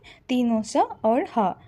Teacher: इन व्यंजनों का उच्चारण करते समय हवा मुख में घर्षण या संघर्ष के साथ बाहर निकलती है। जिससे एक प्रकार की ऊष्मा उत्पन्न होती है। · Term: संघर्षी व्यंजन